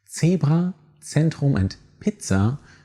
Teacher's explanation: It should always sound like a sharp S with a slight TZ undertone. Zebra, Zentrum, and Pizza should make clear how to pronounce it.